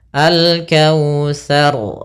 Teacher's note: diangkat lagi ujung lidah kepada makhrajnya di langit-langit atas, biar agar lebih tebal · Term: ra tafkhim